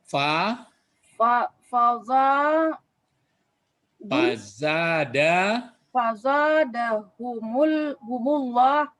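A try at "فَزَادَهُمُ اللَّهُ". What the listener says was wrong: Kasih baris. Ya, humullahu.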